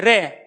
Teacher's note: क्योंकि यहां पर जो जीभ है ना हमारी वो लुढ़क जाती है। और जहां जिस वर्ण के उच्चारण करने में जीभ लुढ़कती हो तो उसको कहते हैं लुंठित